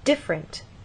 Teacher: and they'll say different, stress on the first syllable